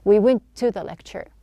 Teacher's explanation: instead of pronouncing two T's, we just have one.